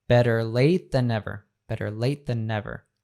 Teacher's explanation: the late ends with a t and the next word begins with a th so we actually drop that first t